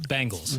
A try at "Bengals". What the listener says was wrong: No, that sounds like an A.